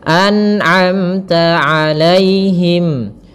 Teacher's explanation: Nah, tidak boleh memantul, tapi an'amta. Kemudian pada lafal amta ada mim mati bertemu ta, izhar syafawi, jelas suara mimnya.